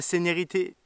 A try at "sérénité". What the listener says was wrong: dit séné. Séné, t'as dit. non, serré. Tout, c'est toujours serré.